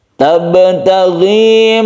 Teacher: Tabtaghi ada ba yang ada di tengah kata yang dia itu sukun, kita namakan dengan qalqalah sughra. Kita pantulkan ba tersebut karena dia termasuk huruf qalqalah, huruf yang memantul apabila disukun.